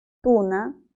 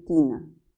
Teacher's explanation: bien sabemos que estas dos palabras distinguen su significado justamente porque la primera la u es posterior y la i es anterior tienen en común la altura de la lengua ambas son altas